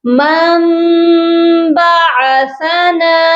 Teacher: اب ہم اس کو ایسے پڑھیں گے میم میم زبر مم، اور یہاں پر غنہ بھی کیا جائے گا، اور نون جو ہے اس کو ہم نہیں پڑھیں گے، یہاں پر میم ہی پڑھا جائے گا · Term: اقلاب